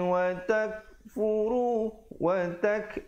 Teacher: ada hamas di situ bunyi anginnya